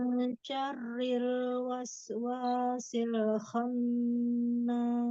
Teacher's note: Roknya tipis karena berakat kasroh.